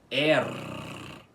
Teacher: com o R final enrolado, ok? E não assim, R, com esse R fraco.